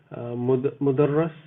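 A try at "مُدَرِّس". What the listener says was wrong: Mudarris. with a kasra. Mudarris.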